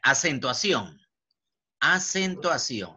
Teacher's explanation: la sílaba sion-sión lleva la mayor fuerza de voz por lo tanto es aguda